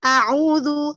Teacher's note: A'u, kemudian ainnya dhammah sempurna, itmam dhammahnya harus disempurnakan, dimonyongkan dua bibirnya. A'udzu, kemudian zalnya ditipiskan dzu.